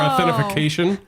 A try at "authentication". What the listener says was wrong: Authentication. Extra syllable in there.